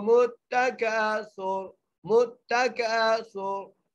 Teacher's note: यहाँ पर हम रा को साइन आउट कर लें वक़फ़ की वजह से, तो यहाँ पर हम क्या करेंगे, रा को मोटा करके पढ़ेंगे